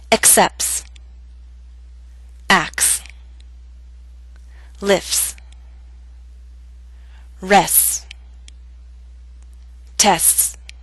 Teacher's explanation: in fast speech we leave out the T sound.